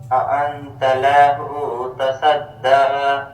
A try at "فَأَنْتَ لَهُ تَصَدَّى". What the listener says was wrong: ابھی اپنے لام کو کھینچ دیا، فأنت له تصدى تصدى. اب دیکھیں، ایک تو میں نے آپ کو زبر کے متعلق بتایا نا کہ زبر زیر پیش ہو تو اس کو کھینچنا نہیں ہے.